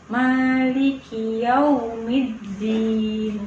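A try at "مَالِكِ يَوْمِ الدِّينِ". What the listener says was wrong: Kurang mencucu. Tinggal monyong doang.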